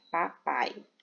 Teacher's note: o A é uma vogal e o I é uma semivogal. Então, não existe aqui duas vogais. Existe uma vogal e uma semivogal.